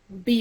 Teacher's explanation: you notice it's both lips that I used to say the word b